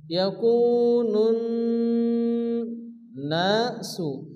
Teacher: নুনের উপরে কি তাসদীদ? নুন গুন্না ওয়াজিব, এক আলিফ গুন্না করতে হবে। ইয়াকুনুন নাসু, এখানে আলিফ মাদ্দা এক আলিফ পরিমাণ টান দিয়ে পড়তে হবে।